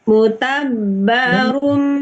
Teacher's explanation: tanwinnya dilebur atau dimasukkan ke huruf mim